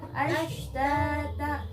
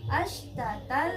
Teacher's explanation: Nah, itu harus panjang. Ta-nya harus panjang, 2 harokat.